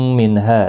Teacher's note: نون ساکن کے بعد ہا آیا ہے، یہاں پر بھی اظہار حلقی ہوگا